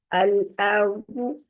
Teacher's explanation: اگر آپ ارض کریں گے اکثر ہماری یہ غلطی ہوتی ہے کہ الارض کر دیتے ہیں، اس میں حمزہ پور ہو گیا. حمزہ کو پور نہیں کرنا، صرف را اور زواد کو پور کرنا ہے